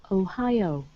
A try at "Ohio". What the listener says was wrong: Good, good, much better.